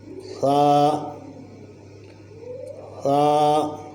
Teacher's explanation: ثا کو ادا کرتے ہوئے زبان کی نوک کو اوپر والے سامنے کے 2 دانتوں کے ساتھ لگائیں گے تو ثا ادا ہوگا۔ اس پہ سیٹی نہیں بجے گی، بلکہ اس کو نرمی سے ادا کریں گے۔